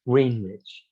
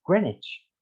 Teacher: the e vowel is dropped and w is not said